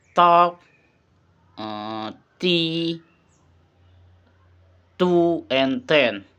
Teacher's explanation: The t sound is voiceless, alveolar, and plosive. The explanation is produced by touching the tongue to the alveolar ridge just behind the upper teeth and releasing the air without vocal cord vibration.